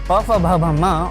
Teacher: इनका उच्चारण होठों के मिलने पर ही होता है। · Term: औष्ठ्य